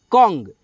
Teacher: अनुस्वार इसको हम लोग न और आधा म पढ़ते हैं